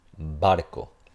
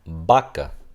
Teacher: Si tenemos, por ejemplo, una palabra, digamos barco, cuando es el primer sonido lo que vamos a decir, después de una pausa o al inicio completo, siempre va a sonar como el sonido oclusivo. Entonces aquí será barco.